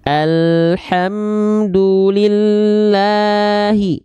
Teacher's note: saya baca tidak ngayun bacaannya tapi tetap kadarnya dua kali Ayun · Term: dua harakatnya